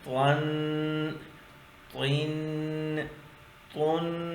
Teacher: تو جڑ کے ساتھ ملانا ہے، دانتوں کے ساتھ زبان کا سرا نہیں ملانا. دانتوں کی جو جڑ ہے، جڑ کے ساتھ زبان کا سرا ٹچ کرے گا تو یہ لفظ ادا ہوگا. تو اس کے اوپر دو زبر ہے.